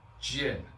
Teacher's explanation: and fourth tone is falling